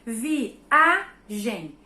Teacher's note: a sílaba tônica é a e eu sei também que essa sílaba é a penúltima da palavra viagem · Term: paroxítona